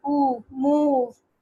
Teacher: back of the tongue इसमें रेस हुआ है, और क्लोज लिप राउंडिंग है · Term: लॉन्ग वॉवल